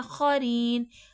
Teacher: ری میں یا مدہ ہو رہا ہے، یا ساکن سے پہلے زیر ہے، تھوڑا کھینچ کے پڑھا جائے گا